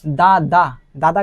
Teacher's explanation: जीभ को आप तालु में टच कीजिएगा ना तो दादा का आवाज निकलता है